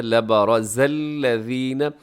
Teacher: را اس میں موٹا ہے، را کے اوپر حرکت ہے